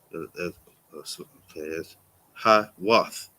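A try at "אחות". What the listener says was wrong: No, there's no ha there. What is the first letter?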